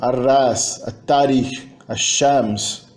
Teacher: Ou seja, não só o L desaparece, se funde, como o resultado é que a consoante alveolar fica geminada, é pronunciado de maneira mais longa